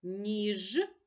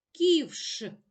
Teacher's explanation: ж дзвінкий приголосний ш глухий приголосний